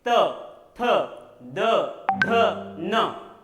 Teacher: इन व्यंजनों का उच्चारण करते समय दंत्य और जीभ का मध्य हिस्सा स्पर्श करते हैं, त थ द ध न, इसलिए इन्हें दंत्य कहा जाता है।